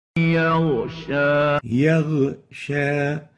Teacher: So we shouldn't replace the ghain with a kha.